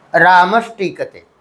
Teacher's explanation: विसर्ग के बाद ट ठ के आने पर जो विसर्ग है, विसर्ग के स्थान पर मूर्धन्य शकार हो जाता है। तो वही चीज़ यहाँ पर एक साथ हमने कर दिया है।